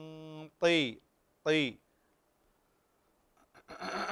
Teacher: الطاء ليس فيها همس